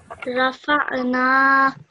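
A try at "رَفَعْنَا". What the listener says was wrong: Try to make that ayn sound a bit more from deeper within your throat. Rafa'na. But make sure you pronounce that ayn sound from your throat, okay?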